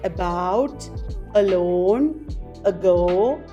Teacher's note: schwa is the unstressed short central vowel uh you have it at the beginning of words like about